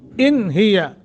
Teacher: नून साकिन के बाद हा हरूफ हल्की में से है गुन्ना नहीं करेंगे, इजहार करेंगे